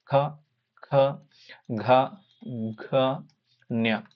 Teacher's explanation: ಕಂಠದಿಂದ ಹುಟ್ಟುವ ಅಕ್ಷರಗಳನ್ನ ಕಂಠ್ಯಾಕ್ಷರಗಳು ಅಂದ್ರೆ ಗಂಟಲಿನ ಭಾಗದಿಂದ ಹುಟ್ಟತಕ್ಕಂತವು